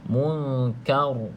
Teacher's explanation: kena baca ra tersebut dengan bacaan yang tebal. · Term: ra tebal